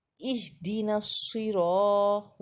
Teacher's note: اہدنا صاد موٹا پڑھا جائے گا، صاد زیر سوئی، نصی، اہدنا الصراط، را میں الف مدہ ہے، طاعت کو لام کے ساتھ ملائیں گے۔